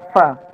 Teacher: Fa itu salah satu huruf hamas, yaitu mengalirnya nafas. Fa. Jadi anginnya keluar dulu.